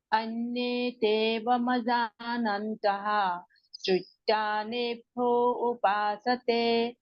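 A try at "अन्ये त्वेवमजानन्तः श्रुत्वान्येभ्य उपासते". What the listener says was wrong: एभ्यो नहीं है ना, श्रुत्वा नेभ्य, श्रुत्वा नेभ्य। हाँ बाकी का ठीक।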